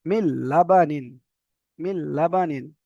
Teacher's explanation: মিনটা হবে না মিমটা ডাইরেক্ট লামে যাবে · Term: ইদগামে বিলা গুন্না